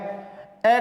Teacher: ए का जब हम उच्चारण करेंगे तो जीभ के बीच का भाग ज्यादा सक्रिय रहता है, इसलिए ए है मध्य स्वर।